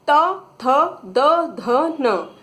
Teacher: अब ता वर्ग होता है, देखिए पीछे टेबल में आप देखेंगे, त, थ, द, ध, न, ये ता वर्ग कहलाता है। आप इन सभी वर्णों का अगर उच्चारण करेंगे तो जिह्वा दांत को टच करती है ना, स्पर्श होता है दांतों का। तो इसीलिए ता वर्ग का उच्चारण स्थान में ऑप्शन राइट होगा दंतः, दांतों का।